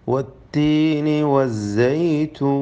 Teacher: വഖഫ് ചെയ്യുമ്പോൾ അവിടെ ദീർഘം നൽകിക്കൊണ്ട് വഖഫ് ചെയ്യൽ, മദ്യ ആരിദ് നൽകൽ അനുവദനീയമാണ്. സൈതൂൻ എന്നിങ്ങനെ നീട്ടുക.